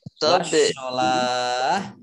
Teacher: dibaca sukun karena wakof, maka menjadi mat arid lis sukun, dibaca panjang 2, 4, 6 harokat.